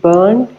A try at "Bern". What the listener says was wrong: No more burn. This is not burn. Bern.